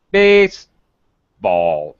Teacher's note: Very low pitch on the second word.